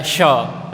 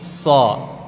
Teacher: kemarin sudah kita pelajari itu di tengah lidah kalau so itu di ujung lidah jadi beda makhraj